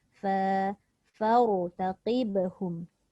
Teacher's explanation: Okey, ra saja tebal, fa tidak.